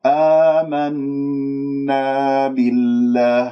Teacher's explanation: نون مشددة من كلمة آمنا لا تنبرها · كسرة الباء أبينها ما أختلس الكسرة